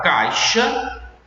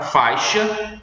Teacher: o A de caixa e o A de faixa são muito mais audíveis do que a semivogal I. Tanto é que, determinadas vezes, a gente engole essa semivogal.